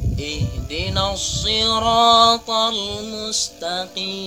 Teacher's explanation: Jadi dihilangkan na-nya tidak panjang, tetapi dimasukkan ke huruf alif lam syamsiyah.